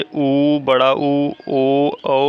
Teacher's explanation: वृत्तमुखी में ओठ हमारे वृत्त के आकार के बन जाते हैं